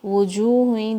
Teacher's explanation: واو کو وی کی طرح نہیں بولنا ہے، وجوہیں نہیں بولنا ہے. وجوہیں ہونٹوں سے آواز آئے گی، ہونٹوں کو گول کرنا ہے آپ نے. وجوہیں جیم واو 2 کاؤنٹ.